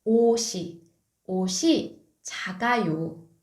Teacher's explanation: So 옷, the final consonant is 시옷. So the original sound of 시옷, s sound, is transferred into next vowel